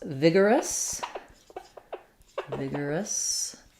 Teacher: so we have first syllable stress in vigorous